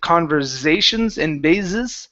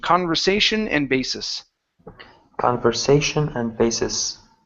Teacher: all the s's in those words are going to be unvoiced s's